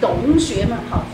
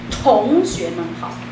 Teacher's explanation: Lots of air between the teeth.